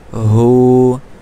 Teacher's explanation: গলায় কোনো প্রেসার হবে না, গলা হলকের শুরু থেকে স্বাভাবিকভাবে আওয়াজটা বের হয়ে আসবে। হা উল্টা পেশ হু।